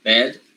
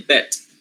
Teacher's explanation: voiced sounds make the vowel a little longer.